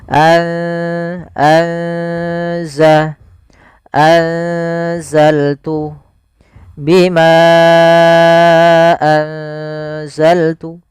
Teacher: ikhfa di antara keduanya sehingga nunnya samarkan ke zai anza atau biasa lebih mudah untuk memperingatnya pakai ng g atau ng gitu ya.